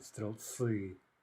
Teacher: we are careful to keep the L soft